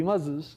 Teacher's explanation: The correct answer, the adult's answer, is to insert a schwa, so the plural of muz will be muzes.